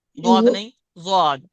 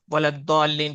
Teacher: कुछ लोग वलद्दालिन पढ़ देते हैं, ज़ाद की जगह दाल निकाल देते हैं